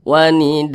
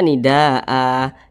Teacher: panjangnya itu lima harakat atau kira-kira lima ketukan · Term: mad wajib muttasil